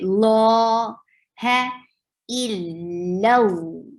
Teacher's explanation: Il, lam is light, but the lam of Allah subhanahu wa ta'ala's name is heavy. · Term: heavy lam